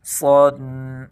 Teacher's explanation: صاد اس کو تیز بھی پڑھیں گے اور موٹا بھی کریں گے۔ پہلے تیزی کے ساتھ پڑھیں گے، اس کے بعد اس کو موٹا کریں گے۔